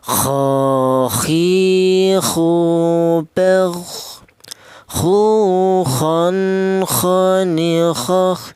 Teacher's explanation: Saya ulang huruf k ini keluarnya huruf berasal dari tenggorokan bagian atas ya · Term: huruf kha